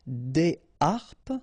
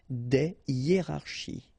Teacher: so you don't make the liaison between the two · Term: H aspiré